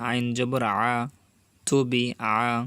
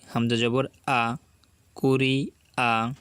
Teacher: আইন কিন্তু একটু গলার ভিতরে যাবে